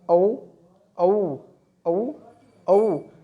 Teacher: ओ और औ जो बोले जाते हैं वो होठों से बोले जाते हैं और कंठ से बोले जाते हैं। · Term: कंठ ओष्ठ्य